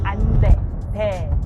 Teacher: normally Korean people just say 안 돼, 돼, 에 vowel. But it's written as 왜, 안 돼.